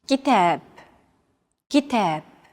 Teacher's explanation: Notice that the second syllable is stressed. It's pronounced longer and louder, while the first and final syllables are shortened. كتاب. If you think about it, this is identical to English.